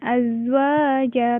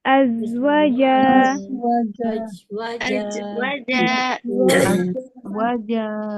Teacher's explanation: Hati-hati di wawnya jangan panjang, jangan azwaja, tapi azwaja.